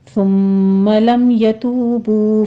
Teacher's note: والمؤمناتی، یہاں بھی حمزہ کو جھٹکے سے پڑھیں گے اور نا میں فتح قائمہ ہے، 2 کاؤنٹ کر لیں گے۔ ثم میں سا کو نرمی سے پڑھتے ہوئے سیٹی کی آواز نہیں آنی